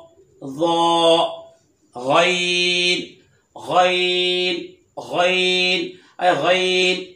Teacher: गैन हलक के ऊपर वाले हिस्से से अदा होता है। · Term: हरफे हल्की